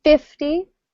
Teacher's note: With 50, we tend to stress the first syllable more.